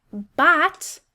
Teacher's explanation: The first syllable, ro, is an open syllable, making that long O sound. And the second syllable, bot, is closed in by that T, making a short O sound.